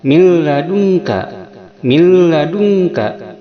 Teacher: sehingga nun masuk pada lam, sehingga nunnya tidak dibaca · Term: idgham bila gunnah